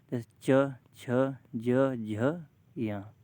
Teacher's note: च वर्ग के पांचों व अक्षरों को बोलेंगे तो तालू से जीव टच होगी